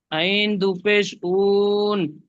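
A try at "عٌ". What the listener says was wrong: আচ্ছা, আপনি বলছেন আইন দো পেশ উন বলে টান দিচ্ছেন, এখানে টান হবে না। আইন দো পেশ উন, এখানে টান হবে না, তানবিন আইন দো পেশ উন বলেন।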